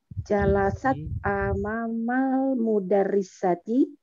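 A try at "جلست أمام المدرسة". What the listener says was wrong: Aywa, benar.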